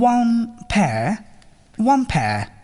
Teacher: প্রথম শব্দটির শেষ সাউন্ডটি, এখানে ন সাউন্ডটি উচ্চারণ না করেই পরবর্তী শব্দটির প্রথম সাউন্ডটি, এখানে ফ সাউন্ডটি দ্রুত উচ্চারণের চেষ্টা করুন। দেখবেন প্রথম শব্দের ন সাউন্ডের পরিবর্তে একটি ম সাউন্ড শোনা যাচ্ছে